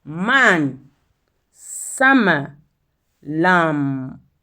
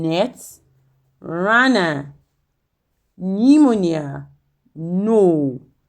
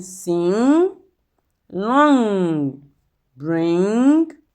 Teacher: Nasal sound, that is, hair is blocked in the mouth but allowed to pass through the nose. Nasal sounds are all voiced.